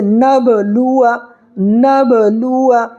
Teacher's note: با پر ساکن ہے، اس لیے یہاں پر تھوڑا قلقلہ کر کے پڑھنا ہے سختی کے ساتھ